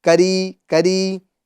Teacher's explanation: کریمن کی جو را ہے اس کو ہم باریک کریں گے کیونکہ را کے نیچے زیر ہے